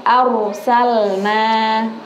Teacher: Di situ ada id arsalna, sama. Ro-nya dibaca tebal, arsalna.